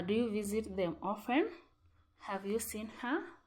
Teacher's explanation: we use Rising intonation in general questions